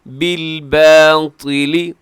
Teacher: طا موٹا رکھیے گا کیونکہ طا اکثر جب زیر ہوتی ہے تو یہ تا میں تبدیل لوگ کر دیتے ہیں. تو طا زیر کی صورت میں زبر پیش کی صورت میں ہر صورت میں سے کیا ہوگا جی اسے موٹا ہی پڑھا جائے گا.